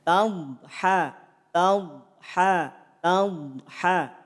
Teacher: saat mengucapkan huruf dad tidak perlu ada pantulan